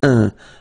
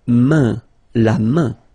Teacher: this combination A-I-N is quite interesting because it will give you the sound un. So it's really a nasal, it goes in your nose